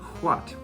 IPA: hʷat